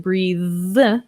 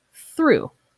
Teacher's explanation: sounds okay next we have the words breathe and through so here we have the voiced th breathe and unvoiced through so these are very similar sounds it's just using our voice